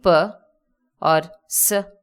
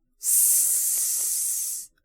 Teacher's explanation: In these consonants, there is no vibration of the vocal cords. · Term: voiceless consonants